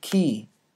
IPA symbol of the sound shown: k